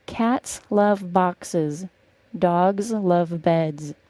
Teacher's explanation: the word cats is the only word with an S sound in that sentence the rest are all pronounced as a Z sound